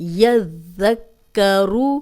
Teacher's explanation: اب ذال کو بھی 2 بار پڑھیں گے، پہلے یذ جزم کے ساتھ، پھر اس کی اپنی حرکت کے ساتھ